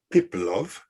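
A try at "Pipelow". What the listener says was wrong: Yeah, more or less, yes. W at the end, you say Piplo.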